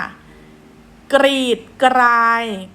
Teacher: เพราะว่าออกเสียงทั้งกไก่และรอเรือพร้อมกัน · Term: คำควบกล้ำแท้